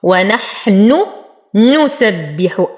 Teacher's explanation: انتبه هنا لتلاقي نونين، لكن النونين متحركتين فكل منهما تظهر